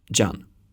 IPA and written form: d͡ʒan (Jan)